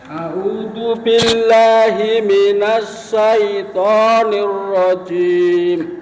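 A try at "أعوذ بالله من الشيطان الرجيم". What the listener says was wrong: Ini sinnya juga belum sempurna. Syai. Sekali lagi sih.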